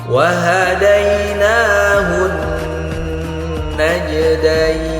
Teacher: maka harus kita dengungkan dua harakat disebut ghunah